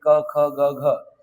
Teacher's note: ताळू मृदू दंत्य नसून कुठून कंठ गळ्यातून उच्चार होणारे ही वर्ण आहेत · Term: कंठवर्ण